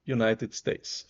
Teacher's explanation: o u não é tão limpinho como a gente usa o u em português é um U também tem esse jotinha